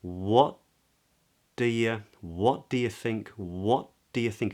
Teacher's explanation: video about glozing which you might want to check out but instead I'm bringing my tongue up to make the T I just don't release it as a t i release it as a d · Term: assimilation